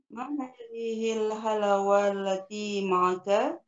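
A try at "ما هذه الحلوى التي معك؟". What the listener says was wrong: Dan halawa, lanya dipanjangin ya.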